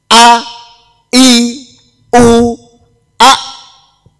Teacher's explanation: hamzah ini munculnya dari tenggorokan yang paling bawah. Paling bawah niku nggih yang dekat dodo niki.